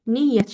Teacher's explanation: Yəni iki y-nı da tələffüz eləyirsiz. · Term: qoşa y